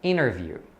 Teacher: quando você tem o T depois da letra N, você vai perceber que eles não falam o T, né, na fala rápida, porque é mais fácil.